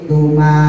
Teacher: tetap ada panjangnya dua harakat